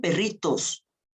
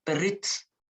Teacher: es muy común que la forma que marca el masculino, es decir, esa O, no se pronuncie. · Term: La O se pierde